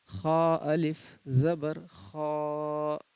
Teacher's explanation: خا کو بھی حلق سے پڑھنا ہے، بالکل اندر کے حصے سے، یعنی کہ آخری حصہ جو حلق کا ہے خا کو وہاں سے پڑھنے کی کوشش کرنا ہے